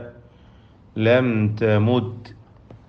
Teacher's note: ലം എന്നതിൽ സാക്കിനത മീം ഇൽഹാർ ഷഫവി മണിക്കാതെ വെളിവാക്കുക. തെമുത്ത്, തെമുത്ത് എന്ന് പറയുമ്പോൾ താഇൻ്റെ ഉച്ചാരണം സുക്കൂൻ നൽകപ്പെട്ട തായ് മഹ്മൂസും ഷദീദുമായ തായ് പ്രത്യേകം ശ്രദ്ധിച്ചു ഉച്ചരിക്കുക.